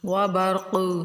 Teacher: قاف موٹا حروف ہے اور حروف کلکلہ میں سے ہے، کلکلہ کریں گے تھوڑا سا ہلا کر پڑھیں گے. آگے جیم وقف کی علامت ہے تو وقف بھی کریں گے.